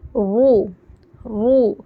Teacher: र पर पेश आया तो र मोटी होती है र को मोटा पढ़ा जाएगा र रू ज सु श सु · رو پر پیش آئے تو رو موٹی ہوتی ہے، رو کو موٹا پڑھا جائے گا.